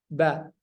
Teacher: Huruf ba kan tidak tertutup rapat ketika diucapkan ba, ya. Ba. Dia cuma tertutup sebentar doang.